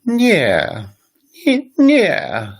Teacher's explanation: the voice is really high and it drops down quite a bit